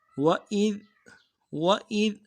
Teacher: إِسْرَائِيلَ، وَإِذ میں واو کو نرم سے ادا کرنا ہے اور حمزہ کو ذال کے ساتھ ملانا ہے، ذال میں آواز باریک ہوگی · ذال کے ساتھ ملانا ہے، ذال میں آواز باریک ہوگی، وَإِذ، ذال کو ہلانا نہیں ہے، قلقلہ نہیں بنانا